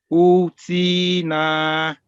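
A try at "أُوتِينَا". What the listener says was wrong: You pronounce correctly na, but you should give same amount of time to these two as well because all three are huruful madda.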